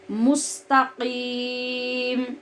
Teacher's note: सीन सीटी के साथ है लेकिन ये बारीक है, स्वाद की तरह पुर नहीं है। और क़ाफ मोटी आवाज़ के साथ पढ़ेंगे और इसकी आवाज़ टकरा कर अपने मखरज से निकलेगी।